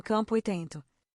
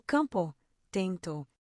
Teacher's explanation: Nesses casos, o M e o N não são o som de consoante plena, eles nasalizam a vogal